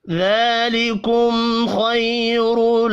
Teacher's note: میم ساکن کے بعد خا ہے، اظہار شفی ہوگا، غنہ نہیں ہوگا